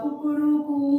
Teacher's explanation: कुकड़ू कू जो बोलता है वो लंबा सा प्लुत स्वर के साथ है, वो ध्वनि प्लुत स्वर के साथ आती है।